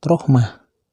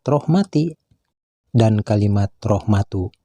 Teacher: Begitu pula dengan kalimat rohmati dan kalimat rohmatu, sama saja bila dihentikan membacanya huruf tak marbutohnya harus dibaca ha seperti kalimat rohmah.